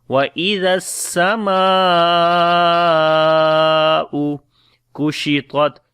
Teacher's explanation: Mim we long due to Alif Madda, because there is after the Madda letter there is Hamza, and also there is big Mad sign which is called Madde Muttasil, which is Madde Wajib. So we long 4 to 5 seconds. · Zal we read in soft sound on the Sin we make Hams and Safir quality.